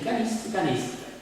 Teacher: La O e la A di canista e canestra non si pronuncia, se leggi canista, canestra, come se non ci fosse nessuna altra vocale. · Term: apocope